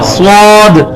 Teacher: یہ سین کو ہی موٹا کریں گے تو سیٹی کی آواز کے ساتھ سواد بنے گا.